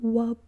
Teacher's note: pronounced as a glide w, the bilabial glide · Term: gliding